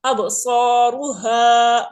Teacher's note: با پہ قلقلہ کر رہے ہیں صاد کو الف کو را کو موٹا پڑھ رہے ہیں